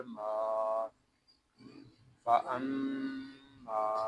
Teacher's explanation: یہاں میم کو ہم ایک الف تک کھینچ کر پڑھیں گے کیونکہ یہاں الف مدہ ہو رہا ہے